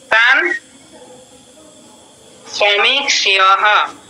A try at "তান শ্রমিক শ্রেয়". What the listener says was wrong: না বিসর্গ তো নেই।